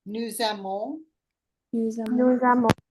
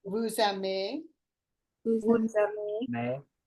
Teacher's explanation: because it starts with a vowel for vous, nous, and il, elle plural, it goes to a Z sound